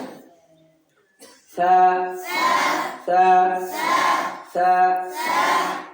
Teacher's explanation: জিহ্বার আগা, সামনের উপর দুই দাঁতের আগা।